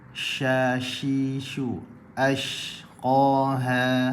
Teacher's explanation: naik tengah lidah ke lelangit atas